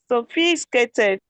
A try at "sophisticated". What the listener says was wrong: Sophisticated. No, you're skipping a syllable. Sophisticated. Sophisticated.